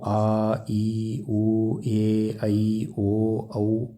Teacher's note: ದೀರ್ಘ ಸ್ವರ ಎರಡು ಮಾತ್ರೆ ಕಾಲದಲ್ಲಿ ಉಚ್ಚರಿಸಲ್ಪಡುವಂತದ್ದು